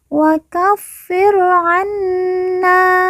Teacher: Fa yang bertahdid kita baca ditekan dan ditahan 2 harokat.